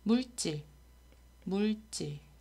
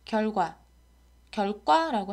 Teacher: 한자어에서 리을 뒤에 경음화가 일어나는 현상이 있는데요